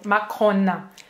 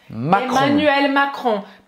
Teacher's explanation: Presta atenção que esse ON no final é só mesmo, tá? A gente não vai pronunciar o N no final